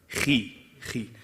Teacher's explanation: the kha is a heavy letter, but if it has a kasra, you put the least emphasis on it.